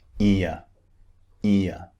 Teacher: vowel sound ear remember it sounds just like the word ear it's two vowels squeezed together ear the mouth starts wide and ends in a neutral position ear ear so let's look at the target sound practice words